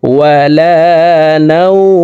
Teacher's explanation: দেখুন লিনের হরফের বামের হরফে ওয়াকফ হইলে মধ্যে লিন এক আলিফ টানিয়া পড়িতে হয়। তো নাও এখানে এক আলিফ টানি মিমকে সাকিন করে ফেলবো। ওয়ালা নাওম জবরের বাম পাশে জজমলা ওয়াও লিনের হরফ আছে।